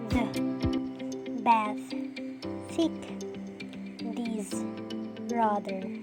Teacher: The air is forced through the tongue and the upper teeth. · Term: fricative